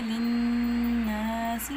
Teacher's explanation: एक अलिफ के बराबर नाक में आवाज़ लेके जाएंगे, जैसे लिन्नासी, और अलिफ मद्दा है। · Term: गुन्ना